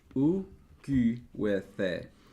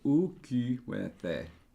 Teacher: So you got your unrounded and rounded in adjacent syllables.